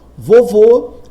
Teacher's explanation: vovô a sílaba tônica é o vô